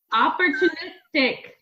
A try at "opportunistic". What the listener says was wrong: You've added extra syllables to that word.